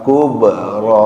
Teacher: Kubro. Ketemu qalqalah huruf ba qub sehingga harus mantul bacanya